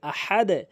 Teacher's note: হামজা জবর আহ, হা জবর হা, দাল দুই পেশ দুন, আহাদুন, ওয়াকফ করলে আহাদে, আহাদও বলবেন না, আহাদে বলবেন, নিচের দিকে সাউন্ড হবে